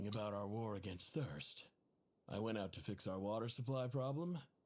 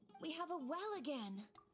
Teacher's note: voice is a little bit deeper, but the vocal fry is pretty prominent in both.